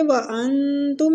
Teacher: وانتم نون کا اخفا ہوگا، اخفا حقیقی ہو رہا ہے